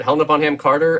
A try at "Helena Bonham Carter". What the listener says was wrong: Stop pronouncing the H. Stop pronouncing the H in her name. Bonham.